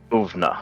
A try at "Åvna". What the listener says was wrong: It's not an A. Have a look at it. It's got a little circle above it.